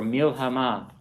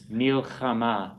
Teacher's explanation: I'm clearly distinguishing between my chet and my hey.